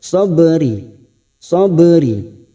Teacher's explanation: ada huruf ba yang mati asli di tengah kalimat kita pantulkan qalqala sugro